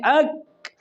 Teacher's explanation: اک، تو اب اس میں سانس تو بند ہو رہی ہے، یہ حرف کاف اپنے مخرج سے ادا ہونے کے بعد اس میں تھوڑی سی آواز جاری رہتی ہے یا سانس جاری رہتی ہے